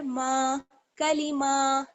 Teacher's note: اس میں الف مدہ آپ دیکھ رہے ہیں جڑا ہوا ہے، ایک الف کے برابر اس کو ہمیں کھینچنا ہوگا۔ میم الف زبر ما، کلیما، تازر تی کلیماتی، حاضر ہی کلیماتی ہی، ومداد کلیماتی ہی ومداد کلیماتی ہی۔